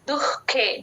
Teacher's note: దు పక్కన విసర్గ హెచ్ లాగా చెప్తాము